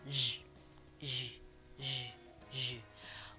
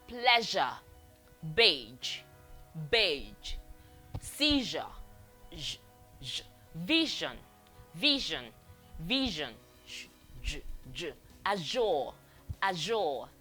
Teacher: Voice fricative made by putting the tip of the tongue a little bit past the alveolar ridge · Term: voiced version